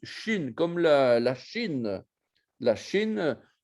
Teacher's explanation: c'est une consonne fricative post-alvéolaire sourde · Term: Shin yémanite